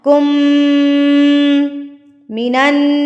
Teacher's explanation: जिस मीम के ऊपर तशदीद हो या नून के ऊपर तशदीद हो, उनको आपने गुन्ना करके पढ़ना है, नाक में आवाज़ को लेकर जाना है, हमिंग साउंड। कुम मिनन, ये चीज़, इसको कहते हैं गुन्ना।